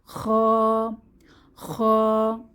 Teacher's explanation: কণ্ঠনালীর শেষ ভাগ থেকে বাতাসকে পেঁচিয়ে খ উচ্চারিত হয়